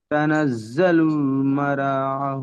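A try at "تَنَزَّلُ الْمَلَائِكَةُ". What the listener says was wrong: মালা মারা না মালা।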